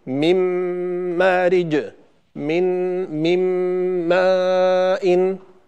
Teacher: فنشاهد النون بعد التنوين وبعد النون الساكنة مشددة، لأنها أدغمت النون الأولى في النون الثانية إدغاما كاملا، والميم بعد النون الساكنة أيضا مشددة لأن النون دخلت في الميم فصارت ميما مشددة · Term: النون الساكنة مع الميم